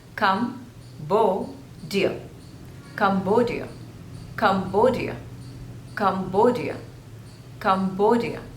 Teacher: There are three syllables and the stress is on the second syllable,